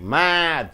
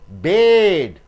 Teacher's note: You pull the A because D is a voice consonant.